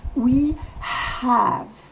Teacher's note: Le have commence par H, il faut donc souffler le H.